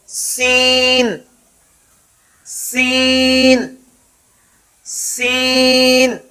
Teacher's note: سین کا مخرج زبان کی نوک جب نیچے والے دانتوں کی جڑ سے لگے مگر سیٹی کی آواز کے ساتھ، سین کو ادا کرتے ہوئے سیٹی کی آواز پیدا ہوگی